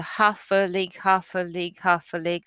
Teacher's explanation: half a league, half a league, half a league onward is a dactylic tetrameter. It also is important because it sort of emulates horses' hoofs.